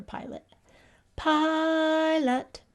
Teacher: I hear that the pi is the louder part that's the stressed part